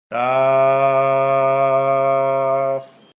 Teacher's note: জিহ্বার গোড়ার একটু আগে তালুতে লাগবে